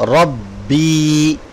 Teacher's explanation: را با زبر رب با یا زیر بی رب بی، سٹاپ ساؤنڈ رب بی۔ بی کو تھوڑا سا لمبا کیوں کر رہے ہیں؟ کیونکہ یہاں پر یا مدہ ہے، ٹھیک ہے، اور سٹاپ ساؤنڈ سکون کی وجہ سے سیم ہو رہا ہے۔